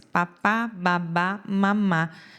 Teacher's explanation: papai, fonema bilabial, que a gente fala que é o P, B e M